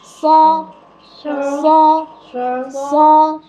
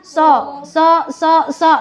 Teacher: pangkal ya pangkal lidah tuh di angkat ke atas jadi bunyinya bulet fosfor folsom bedakan dengan sosok lidah Dede diam di tempat tuh · Pangkal lidah tuh diangkat ke atas. Jadi bunyinya bulat. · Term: huruf isti'la, huruf isti'ala